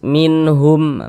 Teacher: Maka nun sukun atau tanwin yang setelahnya huruf H dan juga huruf-huruf yang 6 di samping itu ya, maka hukumnya adalah izhar halqi. Karena dia izhar, maka cara membacanya dibaca jelas, tidak berdengung.